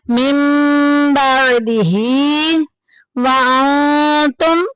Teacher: نون ساکن کے بعد تا آ گیا، جو کہ اخفا کی فیملی میں سے ہے، ہم ہائٹ کریں گے، چھپائیں گے، اخفا کریں گے